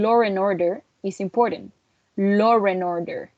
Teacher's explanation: Law would join the following sound with an R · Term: intrusive R